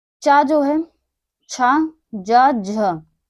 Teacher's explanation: चा जो है, छा, जा, झ, ये 4 हमारे जो हैं वो तालु से उच्चारित होते हैं